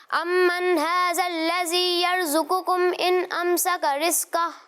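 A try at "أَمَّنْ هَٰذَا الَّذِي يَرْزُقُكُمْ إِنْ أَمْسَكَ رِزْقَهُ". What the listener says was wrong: अच्छी कोशिश है, लेकिन वही गलती है कि दाल में आप सीटी की आवाज़ निकाल रहे हैं।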